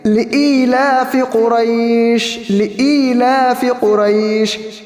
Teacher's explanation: لام کے بعد جو حمزہ ہے اس کو کھینچ کر پڑھیں گے، کیونکہ وہاں پر یا مدہ ہے۔